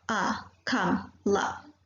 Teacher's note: For A, it is half open central area and the lips are neutral.